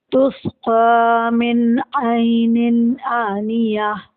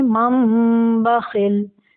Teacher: नून साकिन की आवाज़ मीम की आवाज़ में इसलिए चेंज हुई क्योंकि नून साकिन के बाद बा है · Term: इखलाब